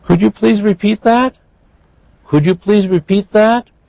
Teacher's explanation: Notice that was a yes-no question. So we have rising.